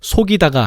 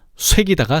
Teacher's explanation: 그리고 뒤음절 이를 보니 모음 이가 있어. 그래서 전설 모음화를 적용하면 속이다가 아니라 쇠기다가 되는 거지